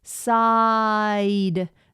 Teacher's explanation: the ah is kind of the most important here because it's the open one and the E comes late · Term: diff thong